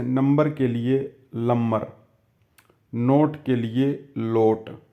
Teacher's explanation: न का ल में परिवर्तन मिलता है। जैसे नंबर के लिए लंबर, नोट के लिए लोट।